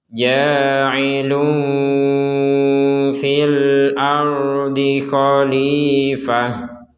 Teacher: Di sini ada tanwin bertemu dengan huruf fa, kita bacanya samar. Jadi ada unsur dengungnya tapi tidak murni dengung. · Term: ikhfa